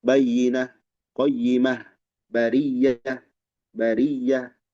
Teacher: Berhenti padanya dengan ha bayyinah ya, bariyah, robbah, semuanya dengan ha kalau berhenti. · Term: ha ta'nis